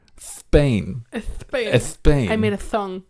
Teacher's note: observation that people in spain all have this speech impediment where they pronounce the s sound as a th sound